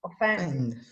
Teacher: So, it is stressed on the second syllable.